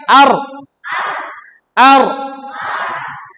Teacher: Baik, agak masuk sedikit ke belakang. Jadi punggung lidah menyentuh langit-langit bagian depan. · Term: Huruf ro